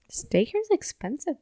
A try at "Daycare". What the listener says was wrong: Oh, you slurred your words there, and it sounded like you said steak here's expensive.